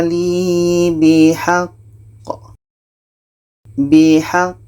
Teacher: Seterusnya dalam ayat 116 kita bertemu lagi dengan qa. Qa ini pendek, maka kita matikan dan diiringi dengan tasydid. Maka ini qalqalah akbar. Cara bacanya kita berhenti 2 detik, setelah itu kita pantulkan.